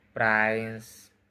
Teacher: A t is inserted between na and s to make the transition easier. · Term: Insertion